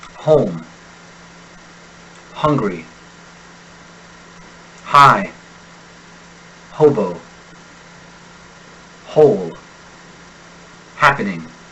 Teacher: when Americans pronounce an H they do so with an open throat one free of obstru destruction home hungry High hobo whole happening · Most of the world's languages use a scratch in the throat to help articulate a foreign relative of the letter H. When Americans pronounce an H, they do so with an open throat, one free of obstruction. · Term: initial H